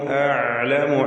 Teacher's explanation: അഅലമു ഐന് വ്യക്തമാക്കുക, തവസ്സുത്തിന്റെ ഹർഫാണ്.